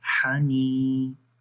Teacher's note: نون یا زیر نی، حنی، ٹھیک ہے، یہ یا مدہ ہے، یا کے اوپر جزم ہے اور اس سے پہلے زیر ہے، تو یہاں پر ایک الف کے برابر لمبا کرتے ہیں